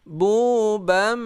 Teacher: bunya panjang 2 harakat juga, mad tabi'i.